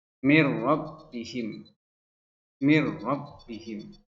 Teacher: Idgham bila gunnah, yaitu memasukkan huruf ke huruf berikutnya tanpa disertai dengung